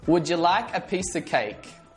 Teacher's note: how of sounds like a schwa